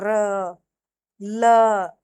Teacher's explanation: र होता है वर्त्स्य, इसको दंत मूल और मसूड़ा से बोला जाता है। जैसे र, ल, ल भी वर्त्स्य है, दंत मूल और मसूड़ा यूज होता है इसमें।